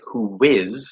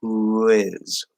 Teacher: It's going to be like a small W because oo is close to w, the W sound. So who is, and it sounds like there's a little W in between them.